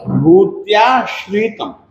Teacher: देखिए आप लोग बोलते हैं भूत्याश्रितम, जबकि ऐसा है नहीं। भूत्याश्रितम तालव्य है। ये देखिए श जो है ना श्रीमान जी वाला है, तो ये तालव्य है।